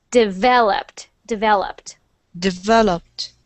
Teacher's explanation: when we say that word, we put the stress on the syllable that is vel.